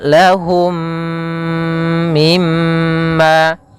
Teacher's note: maka dinamakan dengan Idam Mimi Idam mim mim yang kedua mim cara membacanya masukkan mim yang pertama kepada mim yang kedua kemudian ditahan gunahnya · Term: idgham mimi